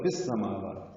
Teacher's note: فی کو السماوات کی سین سے ملا دیں گے، ادغام شمسی ہوگا